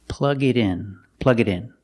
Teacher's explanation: The T in it changes to a fast D.